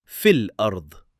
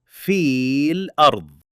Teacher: The ya's elongation disappears and we move straight into the lam.